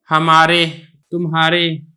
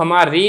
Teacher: را پہ کسرہ ہے لیکن اس کو ہماری نہیں پڑھا جاتا، تمہاری نہیں پڑھا جاتا، بلکہ ہمارے، تمہارے، تو اس کو مجہول کسرہ کہتے ہیں۔